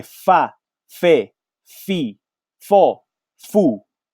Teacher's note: we are making a sound with the lower lip and the upper teeth, and we produce a sound f.